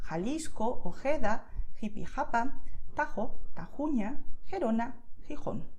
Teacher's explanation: It depends a little bit on the region that you are living or where you come from, and also a little bit on the personal preference of the person. So most native Spanish speakers will make a sound that's not very powerful, so it's a soft sound